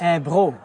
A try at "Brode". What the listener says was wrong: Et il y a un tas de monde qui dit Bro, mais c'est pas vraiment ça. Ça vient B-R-O-D-E. C'est comme Brodé, comme ça. En français.